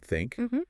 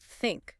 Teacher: There is the unvoiced the where your vocal cords don't vibrate at all like in the word think. >> It is just pure air pushing over the tongue and between the teeth.